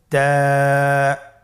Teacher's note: তায়ের মাখরাজ কোন জায়গা থেকে? জিহ্বার আগা সামনের উপরের 2 দাঁতের গোড়ার সঙ্গে লাগিয়ে উচ্চারিত হয়